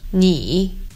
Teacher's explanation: This word meaning you is pronounced in Mandarin as 你 with a falling rising tone.